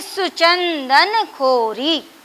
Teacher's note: अब देखिए च तो 1 है, इस पर हमें 1 मात्रा लगानी चाहिए, लेकिन इसका प्रभाव, न का प्रभाव इस पर पड़ रहा है। इसमें च के उच्चारण में हमें ज़्यादा समय देना हो रहा है